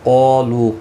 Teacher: قالو قاف اور الف دونوں پر پڑھے جائیں گے. قاف مستعلیہ ہے، پر پڑھا جائے گا. اس کے ساتھ میں الف بھی آیا ہے، یہ بھی پر پڑھا جائے گا.